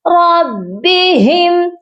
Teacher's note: اس میم پر بھی اظہار ہوگا، اظہار شفوی ہوگا